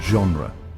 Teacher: In French, G often takes on a soft, almost ZH sound